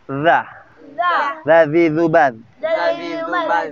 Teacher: Zal, ujungnya lidahnya bertemu ujung gigi seri atas. Boleh dikeluarin sedikit. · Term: huruf zal